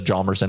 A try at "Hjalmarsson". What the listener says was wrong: You're not respecting the H in his name.